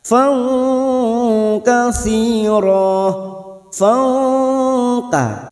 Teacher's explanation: pada saat mendengung kita sudah siap-siap untuk membunyikan huruf depannya yaitu huruf Kaf · Ikhfa ab'ad tetapi jika diringkas menjadi satu ikhfa Hakiki kita semarkan bunyi fathat tanwin kita dengungkan antara dua sampai tiga harakat Fa Katsir Fa Ka pada saat mendengung kita sudah siap-siap untuk